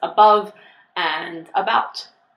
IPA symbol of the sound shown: ə